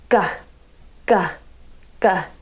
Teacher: our tongue is bunched up so there's a mountain of the tongue the mound of the tongue touches the soft palate quickly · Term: g sound